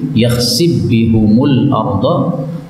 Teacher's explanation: Kemudian fa ketemu ba boleh idgham menjadi yakhsib bihumul arda